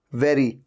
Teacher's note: ऊपर के दांत नीचे वाले लिप पे टच होते हैं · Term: वी साउंड